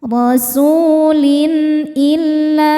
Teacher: Lin ada izhar halqi karena ada tanwin kasrah menghadapi huruf halqi atau tenggorokan yaitu hamzah. Cara bacanya tanwin dibaca jelas.